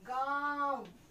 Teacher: See, you can observe gaon from nose and mouth. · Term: अनुनासिक